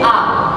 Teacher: huruf hamzah itu adalah keluar dari tenggorokan